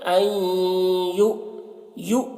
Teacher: یو یہاں پر جھٹکا لگے گا کیونکہ حمزہ ساکنہ ہے، تو حمزہ ساکنہ کا پڑھنے میں جھٹکا لگتا ہے.